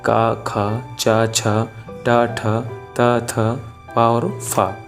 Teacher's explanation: अभी अघोष में क्या था कि उनमें स्वर तंत्रियों में कोई कंपन नहीं हो रहा था